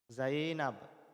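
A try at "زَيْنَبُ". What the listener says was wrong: Jangan disukun.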